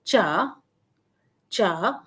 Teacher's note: with a falling rising pitch